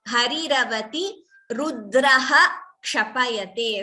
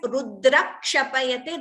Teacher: Visarga followed by Ksha wherever is always chanted in full.